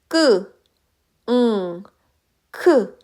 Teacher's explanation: 그 끄 발음해 보시면 혀의 뒷부분이 연구개 쪽에 붙는 것을 확인할 수 있습니다 · 혀의 뒷부분, 뿌리 부분을 입천장 뒤쪽에 부드러운 부분에 대어서 나는 소리를 일컫고요. 크 발음해보시면 혀의 뒷부분이 연고개 쪽에 붙는 것을 확인할 수 있습니다. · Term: 여린 입천장 소리